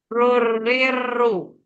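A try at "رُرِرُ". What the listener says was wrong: Nah, coba kurangi getarannya. Nah, tadi agak terlalu banyak. Jadi getarannya udah pasnya segitu, jangan terlalu banyak.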